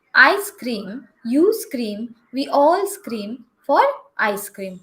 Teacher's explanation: i'm not getting any kind of e sound before s yes before the s sound